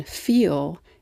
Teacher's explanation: it's a dark L o more of the body of the tongue is raised